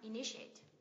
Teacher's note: Initiate, 4 âm tiết, nhấn âm tiết thứ hai em ạ.